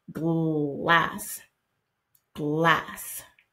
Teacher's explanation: that L is kind of a dark sound right in it to the back of your throat glass glass